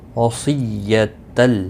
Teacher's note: صاد مستعلیہ ہے، پر پڑا جائے گا، تشدید کو تھوڑا سختی کے ساتھ پڑھیں۔